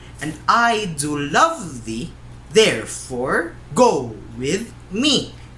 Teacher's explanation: unstressed, stressed, unstressed, stressed, unstressed, stressed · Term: iambic foot